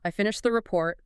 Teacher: The voice goes down. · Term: falling pitch